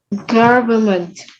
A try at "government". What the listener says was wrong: Government with an N. Don't forget your N here. Government. Government. There's an N here. No, not government. Government. Government. I say government too, but that's not what the phonetics say here.